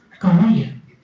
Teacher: the stress of the second syllable